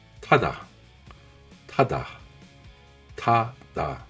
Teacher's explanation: T se prononce avec un souffle d'air fort et prononcé. Main devant la bouche, vous devez sentir un jet d'air chaud. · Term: le t aspiré